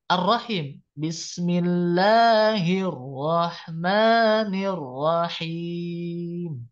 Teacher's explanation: lamnya tidak dibaca ya Bismillahir tidak Hil ro ya tidak tapi dibaca idgham ya suara alam sukunnya dimasukkan ke rnya · termasuk idgham karena ketika masuk ke Arrahman ini lamnya tidak dibaca ya